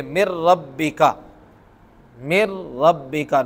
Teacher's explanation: را اور لام آنے پر غنہ نہیں ہوتا